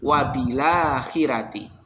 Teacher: roknya tidak dibaca tafkhim tetapi oleh waros karena jatuh setelah kasroh, roknya dibaca tarqiq